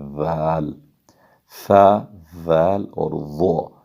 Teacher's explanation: Next word ہے ذال، یہ ثا، ذال اور ضا، تو ضا جو ہے ضا، یہ ثا، ذال اور ضا ان کا ایک ہی مخرج ہے، لیکن ذال کو بھی ثا کی طرح نرمی کے ساتھ بغیر سیٹی کی آواز نکالے، سکار کے بغیر ہم ادا کریں گے ذال، ثا، ذال اور ضا۔